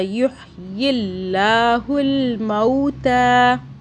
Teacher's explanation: اللہ کو باریک پڑھا کیونکہ اللہ سے پہلے زیر آ رہا ہے